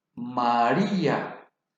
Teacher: En este caso, se marcará la tilde sobre la vocal débil, como el caso de María. La fuerza de la voz recae en la vocal débil y se convierte en vocal fuerte. Entonces se separa, porque los vocales fuertes no pueden formar sílaba. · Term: hiato